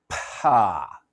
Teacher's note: your lips part sooner than your vocal cords start vibrating when you produce a pa